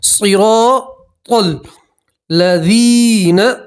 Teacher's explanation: صاد کو بھی موٹا پڑھتے ہیں، را کو بھی موٹا پڑھیں گے، اور را کے ساتھ الف مدہ ہے تو الف مدہ کا بھی موٹا پڑھیں گے، پور پڑھیں گے، اور تا کو بھی پور پڑھتے ہیں، موٹا پڑھتے ہیں، صراط الذین، لذین، دال کے ساتھ یا مدہ اس لیے ایک الف کے برابر کھینچیں گے، ٹھیک ہے۔